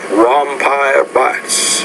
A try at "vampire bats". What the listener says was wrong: Be careful though with the V, vampire bats.